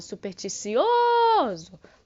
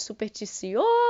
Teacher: então esse ou é o que fica aí mais prolongado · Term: sílaba tônica